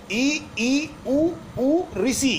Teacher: मुख द्वार यानी हमारा मुंह जो है ये सकरा हो जाता है लगभग बंद होने की स्थिति में आ जाता है जब हम इन पांच वर्णों को बोलते हैं वायु बाहर निकलती है बिल्कुल सक्रिय होकर के और अर्ध संवृत में मुख द्वार कम सकरा हो जाता है यानी थोड़ा खुला रहता है इसमें तो लगभग बंद सा हो जाता है इसमें थोड़ा खुला रहता है। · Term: संवृत स्वर